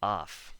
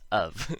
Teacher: the f makes the v sound and the o makes the u sound